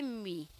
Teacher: Se você observar, o M, ele é uma letra labiodental, né? M, ela fica aqui, presa nos dois lábios.